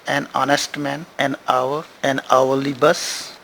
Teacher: these words start with H in initial and the initial H is silent